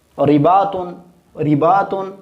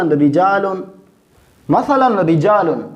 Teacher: اب یہاں پہ چونکہ را سے نیچے زیر ہے لہذا ہم اس را کو باریک پڑھیں گے